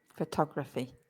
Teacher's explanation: So that's the schwa, photography, 2 schwas in there.